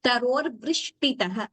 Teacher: we should pronounce it as vrishti, not vru. It should not, we should not have the ukara there. It shouldn't be heard as vrushti.